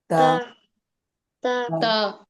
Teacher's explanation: জিহ্বার আগাটা সামনের উপরে দুই দাঁতের গোড়ার সঙ্গে লাগিয়ে উচ্চারিত হবে